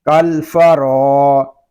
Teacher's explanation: را کو ہم ایک الف تک کھینچ کر پڑھیں گے کیونکہ یہاں پہ الف مدہ ہو رہا ہے۔